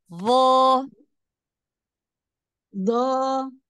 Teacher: du bagus huruf d sama makhrajnya kayak dalal cuman dia bedanya huruf d adalah huruf tebal jadi pangkal lidahnya diangkat